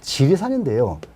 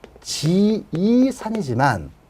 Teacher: 이걸 써놓게 되면 지이산이지만 여기에 뭐가 들어감으로써, 자음, 리을이 들어감으로써 모음과 모음이 직접 만나는 걸 피하려고 한다. 이런 현상을 히아투스 회피라 한다.